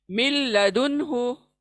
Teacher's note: मिल नून का कोई आवाज़ नहीं